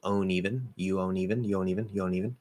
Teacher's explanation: You drop the D, keep the N, link the N, but don't make the O nasal.